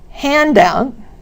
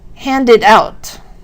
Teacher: the stress is on the first word for the two-word nouns and the second word of the two-word verbs.